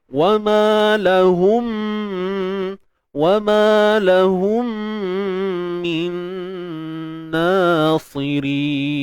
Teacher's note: Dengung sama je, kadar dua harakat. Dengung sempurna. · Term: idgham bi gunnah